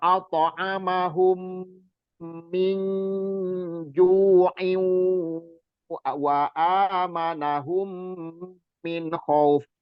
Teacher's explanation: mim mati ketemu mim sama itu gunnahnya 2 harokat. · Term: idghamimi